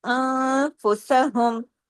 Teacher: سی رو، را پہ پیش ہے نا، اور پھر واؤ مدہ بھی ہے ساتھ میں، خاسرو انفسہم، نون ساکن کے بعد فا ہے، اخفا حقیقی غنہ کاملہ